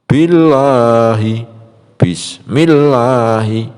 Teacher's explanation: Kemudian contoh yang dibaca tarqiq, billahi, bismillahi. Bunyi lafaz Allah jadi la bukan lo, karena didahului harokat kasroh.